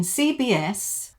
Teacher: in CBS, the B links to the S, but it has to be linked with a Y sound.